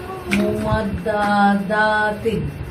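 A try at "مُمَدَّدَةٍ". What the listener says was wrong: তো মা ধরে যাচ্ছে কিন্তু মা ধরে না কিন্তু। মুমাদ দাদা তিন মুমাদ দাদা তিন।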